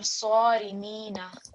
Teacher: So again, sad is going to be a thick sound.